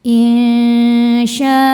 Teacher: Maka syinya dibaca panjang boleh empat boleh lima harakat. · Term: mad wajib muttasil